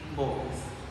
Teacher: According to the place of articulation is labial and according to the manner of articulation is fricative. According to the voice of articulation is voiced.